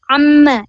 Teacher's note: Ain itu adalah dari tengah tenggorokan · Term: huruf ain